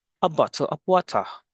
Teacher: It has a non-rhotic accent, meaning the R sound at the end of words is not pronounced.